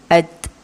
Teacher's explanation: Ada hamas, ada keluar sedikit udara bisikan tu.